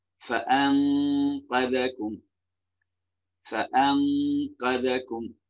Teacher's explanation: அப்ப எப்படி فأنقذكم فأنكذكم இல்ல فأنكذكம்னா நூனை நாங்க மறைக்கலாம் நூனை பாதி நாங்க மறைச்சு ஓதணும்